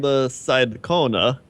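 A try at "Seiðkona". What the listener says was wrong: Now that special character in the middle there, it's pronounced like a TH. So it's the Scythe Kona? Scythe Kona.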